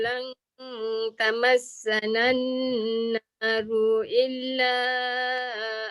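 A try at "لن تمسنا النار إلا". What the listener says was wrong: Ambil balik tamassanan naru illa. Ru pendek. Dia tak boleh baca ru illa. Ru illa.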